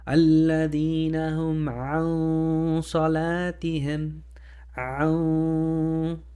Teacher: since we have a heavy letter coming for the noon, we have to add heavy ghunna, heavy nasalization · The N is muted, tongue is not touching the palate, and we're getting ready to say this heavy sod. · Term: Ikhfaa